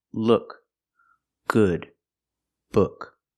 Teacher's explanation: don't use the long ooh like food Use the short uh like look and good